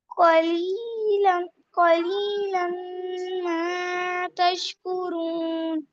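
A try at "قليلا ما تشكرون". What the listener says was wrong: ماں زیادہ لمبا ہو گیا بیٹے، 2 حرف برابر صرف. قلیلا ما تشکرون.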